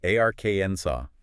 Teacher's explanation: It's silent. Three syllables and the stress is heavily on the first.